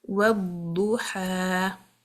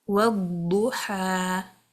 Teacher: It has isti'ala, but the letter ha is from the letters of istifaal. I'll keep the dad heavy, but the ha light.